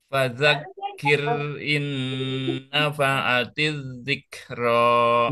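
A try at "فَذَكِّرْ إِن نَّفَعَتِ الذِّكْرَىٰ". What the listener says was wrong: Nah, gitu. Taib, barakallahu fikum ya.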